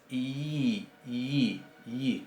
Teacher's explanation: y es un poquito más cerrada originalmente que nuestra I. Es I, I, I, casi como si estuviéramos poniendo una Y o una J muy suave. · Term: yod